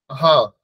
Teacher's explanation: হা উচ্চারণ করতে গেলে শুধুমাত্র কণ্ঠ থেকে একটা হাওয়া বাতাস একটা বেরিয়ে আসছে